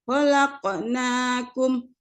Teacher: Huruf apa anak-anak ibu? Qaf. Dibaca qalqalah, yaitu memantul.